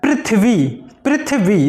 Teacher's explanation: री की साउंड आती है, ना कि रा की।